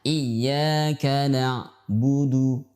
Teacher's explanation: dia tidak ditekan iyyaka na'budu dan juga tidak mengalir iyyaka na'budu, tapi pertengahan iyyaka na'budu pertengahan. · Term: huruf pertengahan